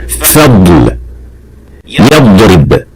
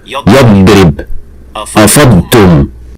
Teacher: Well, if you pronounce that mod properly within a word, you'll notice that when leaving that mod with sukoon and moving to the letter after, you will feel some kind of air released from the sides of your tongue, slightly pushing this air to the corners of your cheeks